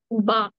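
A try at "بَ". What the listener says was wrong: బా very good.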